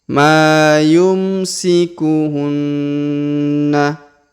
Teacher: huruf na berharakat tasdid maka kita tahan dan kita tekan